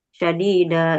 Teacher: Tidak perlu ya dua harakat saja tidak boleh terlalu panjang ya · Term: Mad iwad